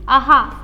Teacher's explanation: विसर्गाचे उच्चार स्थान कंठावर आहे